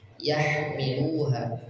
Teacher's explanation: ha keluar dari tenggorokan bagian tengah, bersih, tidak ada ngoroknya, tidak tapi bersih. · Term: huruf ha